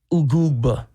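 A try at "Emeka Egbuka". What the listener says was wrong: There's a K. You forgot the K.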